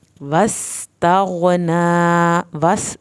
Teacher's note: سین کو سیٹی کی آواز کے ساتھ پڑھنا ہے، غائن کو ہلانا نہیں ہے، نون کی کھڑی زبر کو کھینچنا ہے.